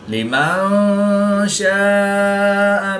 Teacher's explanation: الف مدہ کے بعد حمزہ اسی کلمے میں ہے تو یہاں پر مد متصل ہوگی، 3 سے 5 الف تک کھینچ کر پڑھیں گے